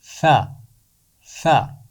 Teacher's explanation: ثا کا مخرج ہے زبان کی نوک اور اوپر والے دانتوں کا کنارہ